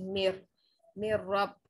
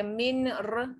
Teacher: Lari dari dengung, tiada bunyi nun mati atau tanwin. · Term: idgham bila gunnah